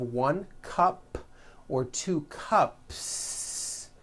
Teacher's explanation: there's no voicing at the end of that word the s remains unvoiced